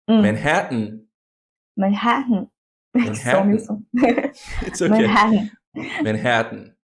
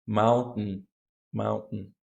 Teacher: n so for example we have that combination in mountain mountain you go to the T but you don't release the air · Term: glottal stop